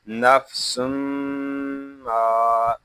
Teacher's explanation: میں ہمیشہ غنہ ہوتا ہے، میم الف زبر ما، نفس ما، یہاں میم کو ایک الف تک کھینچ کر پڑھیں گے کیونکہ یہاں پہ الف مدہ ہو رہا ہے ، یہاں اس کو ما نہیں پڑھیں گے، اس کو پڑھیں